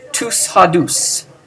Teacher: we have an accent on the last part of the accusative plural ending. That means that it's going to springboard onto the next syllable, whatever it is.